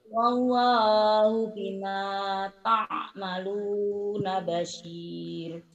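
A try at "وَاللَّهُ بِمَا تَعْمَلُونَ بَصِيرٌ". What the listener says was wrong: Wallahu bima ta'maluna basir. Ainnya belum keluar ya, dilatih nanti ya.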